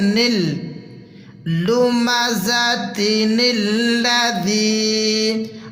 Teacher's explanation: اس نون کو ہم اگلے لام کے ساتھ جوائن کریں گے، ملا کے پڑھیں گے، نون لام زیر نل لمزۃ الذی۔